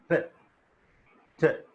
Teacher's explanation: When I say t, my tongue got raised. Which part? The tip, the first tip of the tongue touched teeth ridge. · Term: Alveolar plosives